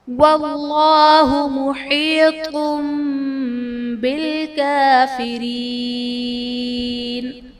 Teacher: اسم جلالت اللہ عز و جل کے لام سے پہلے حرف پر زبر ہے تو یہاں پر اسم جلالت اللہ عز و جل کا لام پر یعنی موٹا پڑھا جائے گا